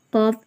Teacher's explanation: காஃப் வந்து முருபே முஸ்தாலியா இல்லையா காஃப் தடிமனா ஓதுறோம்